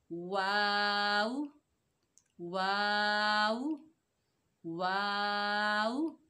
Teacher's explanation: वाव होंठों की नातमाम गुलाई से अदा होगा। होंठों को चोंच की मानद बनाएं।